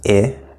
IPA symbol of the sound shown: ɪ